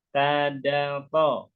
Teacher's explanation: ujung lidah gusi atas tadato, ujung lidah dinding gigi seri atas tadato, ujung lidah hampir bertemu gigi seri bawah sasoza.